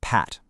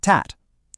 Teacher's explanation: you completely stop the air and then you release it in this tiny little explosion